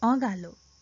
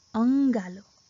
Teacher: with chandra bindu it is pronounced more like nasal sound and with sirabindu it is pronounced angalo